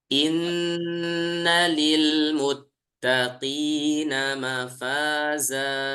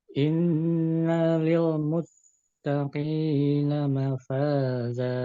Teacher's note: Innanya itu cukup ditahan aja gunahnya, kemudian dia tidak panjang.